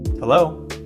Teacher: Americans usually just say, Hello. with a rising tone, like a question.